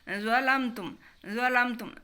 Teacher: بغیر سیٹی کے اور صفت اطباق کے ساتھ